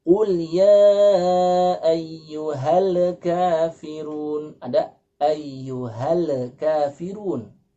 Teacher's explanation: Kemudian kesalahan yang ketiga, Kesalahan yang ketiga masih pada ayat yang sama, yaitu mengucapkan al-kafirun, yang seharusnya lam itu bukanlah huruf qalqalah, tapi dibaca membal menjadi qalqalah